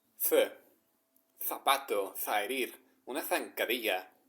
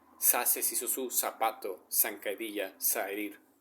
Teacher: in Spain, it is th, like the th sound in English, like as in tho.